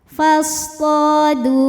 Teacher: karena ada wau sukun didahului baris dammah maka huruf dal panjang dua harakat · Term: mad thobi'i